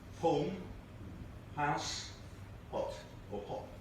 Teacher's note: People who speak MLE say home, house, hot, or hot. They have the H's there. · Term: reversal of H dropping